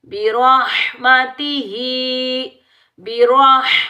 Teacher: را کو زبر کی وجہ سے پر پڑھیں گے موٹا پڑھیں گے